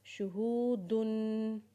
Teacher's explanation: दाल के ऊपर जब तनवीन पढ़ेंगे तो उसके ऊपर गुना करेंगे